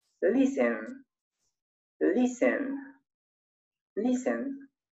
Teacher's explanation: Pero en la pronunciación se obvia la consonante T.